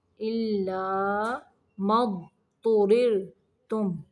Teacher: تو کو موٹا پڑھیں گے، تو ریر، یہاں پہ را کو باریک پڑھیں گے ساکن کرتے ہوئے، إِلَّا مَا اضْطُرِرْتُمْ إِلَيْهِ.